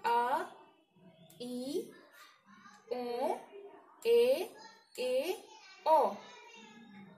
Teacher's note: अब आते हैं हम दीर्घ स्वर पर। इन स्वरों के उच्चारण में ह्रस्व स्वर से दो गुना समय लगता है, यानी दो मात्रा उसका से ज्यादा समय लगता है।